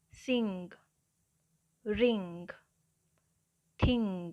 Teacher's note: ਜਿਵੇਂ words ਨੇ sing, ring, thing, ਹੁਣ ਇਹਦੇ ਵਿੱਚ ਜੋ ਸਾਊਂਡ ਆ ਰਹੀ ਹੈ ing, ਇਹ ng ਸਾਊਂਡ ਹੈ। The ng sound is called the velar nasal. Velar consonants articulated with the back part of the tongue.